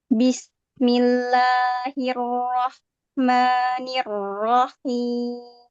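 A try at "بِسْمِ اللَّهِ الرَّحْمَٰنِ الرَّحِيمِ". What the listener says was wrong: Ya, kenapa sinnya dikit banget ya tuh? Bismillah. Suka putus ya.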